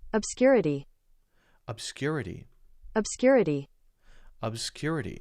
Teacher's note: But then the cool thing is, you can see here in this second syllable, you've got this cool bold that tells you where the stress on the word is. So the stress on the word is clearly the second syllable. Syllable 1, syllable 2, syllable 3, syllable 4.